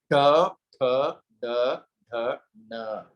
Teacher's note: जिह्वा उपरि अग्रे स्पर्शं करोति